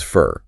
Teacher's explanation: the preposition for is almost completely reduced. It just becomes fur or sometimes just an sound.